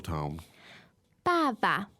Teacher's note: the first one is fourth tone but then the second one becomes neutral tone